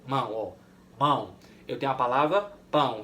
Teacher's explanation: Então esse ditongo é nasal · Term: ditongo nasal